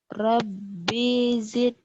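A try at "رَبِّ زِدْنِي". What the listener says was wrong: Pendek B-nya. Rabbi zidni.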